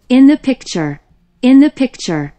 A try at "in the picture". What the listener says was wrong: 그렇지.